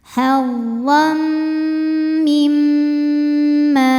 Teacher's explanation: Karena ada tanwin fathah menghadapi huruf mim, maka tanwin masuk ke mim, hazzam disertai bunyi dengung. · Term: gunnah